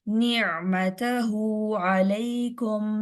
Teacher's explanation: ने नहीं करना, नून जेर नी